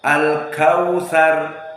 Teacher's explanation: Al-kautsar huna waw sakinah wa huwa rakhawah